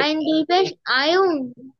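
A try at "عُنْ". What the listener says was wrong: আয়ুন। আয়ুন কি জিনিস? গলা চেপে আওয়াজ হবে ও তো বলা যাবে না তো। আইন দুই পেশ উন। উন।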